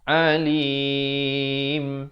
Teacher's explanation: Alim jadi huruf hamzah. Di sini huruf ain. Makhrajnya di tengah kerongkong. Alim. Di akhir baru tutup mulut rapat.